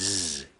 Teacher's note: one uses the throat and it's vibrating, it's called voiced, and that's the z sound.